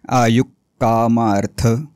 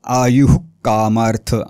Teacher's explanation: विसर्गाच्या पुढे क किंवा ख आलं तर विसर्गाचा उच्चार अर्धा करायचा ठसका लागल्यासारखा